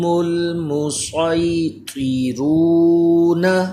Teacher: اظہار شفوی کا قاعدہ ہے غنہ نہیں کرنا